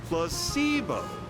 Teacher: The stress is on the middle syllable.